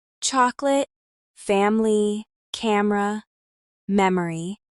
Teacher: how Americans use the schwa sound in unstressed syllables. This is the most common vowel in American English and it's what makes speech sound more relaxed. · chocolate is pronounced chocolate, with the middle syllable reduced to almost nothing.